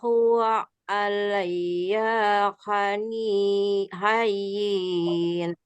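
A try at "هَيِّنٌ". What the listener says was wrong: Hayyin, diberhentiin aja, jangan dipanjangin.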